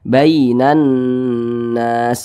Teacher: Huruf lin yang terjadi pada huruf ya sukun ya, maka itu harus berhati-hati ketika mengucapkannya. Jangan sampai condong ke i. Jangan dibaca bainan nas, jangan.